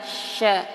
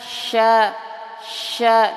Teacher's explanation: Yang masih bingung, sya itu ada di, sebentar, sya ini nih, keluarnya dari tengah-tengah lidah, sya, tengah-tengah lidah dan menempel ke langit-langit atas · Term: makharijul huruf sya